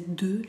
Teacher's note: va a ser deux en la pronunciación, bien redonda la boca.